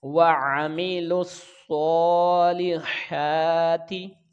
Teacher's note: لام کے نیچے زیر ہے، اس کو جلدی ادا کریں گے. ہا کے اوپر کھڑی زبر ہے، اس کی آواز کا خیال رکھیں گے اور اس کو کھینچ کے بھی پڑھیں گے. اور تا کے نیچے زیر ہے تو اس کو جلدی ادا کریں گے.